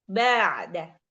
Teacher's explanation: Oke, hati-hati ketika di ba'da, jangan jadi ba. Ba-nya tipis, jangan terlalu tebal.